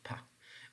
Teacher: when you're pronouncing the sound P you feel less vibration in your vocal fold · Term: voiceless